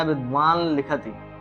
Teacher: यहाँ पर लिखा है नस्यानुनासिको लह, नकार अनुनासिक है इसलिए लकार भी अनुनासिक होगा। यहाँ पर जो नकार है विद्वान में जो नकार है अनुनासिक है, इसलिए लकार जो परसवर्ण होगा वो परसवर्ण भी अनुनासिक, जो आदेश होगा वो भी अनुनासिक होगा।